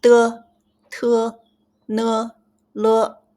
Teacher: tip of your tongue touches upper teeth, the roof or the root of the upper teeth.